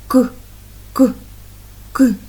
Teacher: його не можна Ні потягнути ні проспівати він точно вибухає